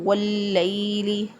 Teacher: اب یہاں پر الف لام کے بعد حروف شمسیہ میں سے لام آ گیا، تو اس لیے لام ال میں سے الف لام میں سے لام کا جو ادغام ہے وہ حروف شمسیہ کے اندر ہو گیا، لام کے اندر ہو گیا، تو ہم نے اس کو پڑھا واللیل۔ · دونوں لام اکٹھے ہو گئے تو ہم نے اس کو پڑھنے کے لیے پیچھے والے حرف کے ساتھ اس کو ملا دیا، ہم نے اس کو پڑھا واللیل۔